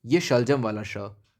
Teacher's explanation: ये श में ये आपकी जुबान होती है वो थोड़ी सी टिल्ट होती है ऊपर की तरफ